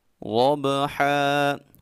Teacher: ضاد کو خوب موٹا پڑھیں گے، اور جب بھی ضاد کو ادا کرنا ہے اپنی زبان کی سائڈ اوپر کی 5 داڑوں کے ساتھ لگائیں گے